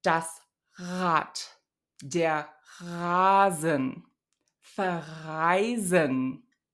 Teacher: friction between the back of the tongue and the uvula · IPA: [ʁ]